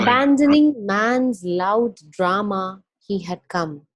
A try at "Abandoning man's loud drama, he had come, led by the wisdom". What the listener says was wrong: No, he had come. He had come, and then he had come led by the wisdom. So you have to almost connect, even though there's a pause, you have to connect those two lines.